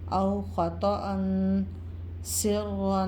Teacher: یہاں پہ دو زبر کے بعد اخفاء کے 15 حروف میں سے سین آ رہا ہے تو اخفاء کا غنہ کریں گے